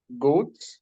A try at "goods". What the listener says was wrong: Goods. Exactly,